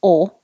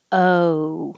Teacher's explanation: oh so you're not just saying o but oh your jaw is more low the tongue is starting lower in the middle and rising up in the back